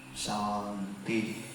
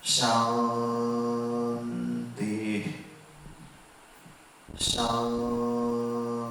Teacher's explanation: when we say Shanti, make it Sha little longer. Ti, that I.